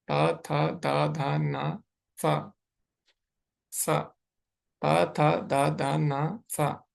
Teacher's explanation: तो अभी देखो जो ये स है, यानी जो साकार वाला सा है यहाँ पे, तो ये कहाँ से उच्चारण होगा इसका, दंत्य यानी दंतः, जो ऊपर वाले दांत है उसके पीछे से।